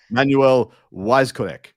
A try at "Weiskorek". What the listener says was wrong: No, it's Vizorek. Yeah, W's in German are V's.